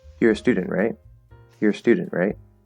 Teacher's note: for a question tag we fall before the question tags it's like a statement you're a student and then we go right right we go